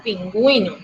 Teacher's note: Digo pingüino, o sea que le coloco el acento a la U. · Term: diéresis